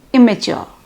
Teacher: the double M in the spelling is pronounced as a single M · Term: degemination